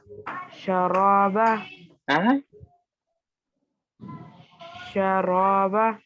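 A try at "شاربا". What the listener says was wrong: شرابا نہیں را کو نہیں کھینچیں گے بلکہ شاہ کو کھینچیں گے. شین الف زبر شاہ ہے الف سے پہلے زبر ہے اور را پر زبر ہے. آپ نے شین کو جو ہے جلدی پڑھ دیا اور را کو کھینچ دیا.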